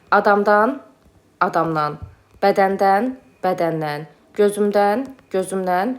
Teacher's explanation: Dan dən çıxışlı hal şəkilçisi mə n hərfləri ilə bitən sözə qoşulduqda nan kimi tələffüz olunur. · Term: nan tələffüzü